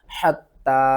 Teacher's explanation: یہاں پر تا کو ہم نے 2 بار پڑھنا ہے اور تا کے اوپر سختی کرنی ہے اور تا کو ایک الف کے برابر کھینچ کر بھی پڑھنا ہے